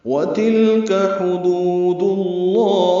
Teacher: واو ہونٹوں کی نا تمام گلائی سے ادا کریں گے۔